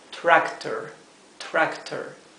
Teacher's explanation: la lengua vuelta hacia atrás apoyada en la parte superior del paladar · No se pronuncia con la lengua sobre los dientes como la R española, sino que se pronuncia con la lengua hacia atrás sobre el paladar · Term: la r inglesa, la R inglesa